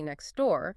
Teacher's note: you often don't really hear the T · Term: elision